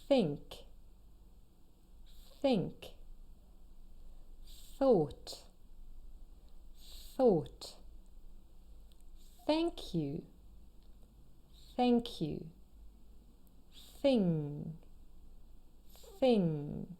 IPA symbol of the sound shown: θ